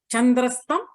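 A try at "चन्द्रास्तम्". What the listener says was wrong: There should be a dirgha. Chandra Astam Chandrastam.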